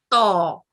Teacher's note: اور اسی طرح تو حروف تفخیم ہے, اور اس کو اگر ہم منہ کو گول رکھتے ہوئے اور زبان کے آدھے حصے کو اوپر والے دانتوں کے ساتھ اور تالوں کے ساتھ جوڑ کے ادا کریں تو یہ موٹی اور پر ادا ہوتی ہے